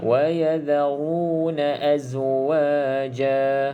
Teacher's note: Okey, sebab ra ini berbaris di hadapan. Ra berbaris di hadapan dan berbaris di atas, kita kena baca dengan tebal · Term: hukum ra